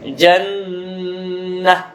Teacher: Jannah ditahan, nun bertasydid, hukumnya adalah gunnah